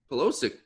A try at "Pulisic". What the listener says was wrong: Pulisic. You were close. It's an I. You said Pulisic. There's an I after the L.